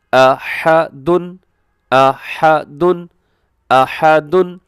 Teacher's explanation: اس میں آپ نے ح کا خیال کرنا ہے، ح کی جگہ پہ ہا نہیں پڑھنا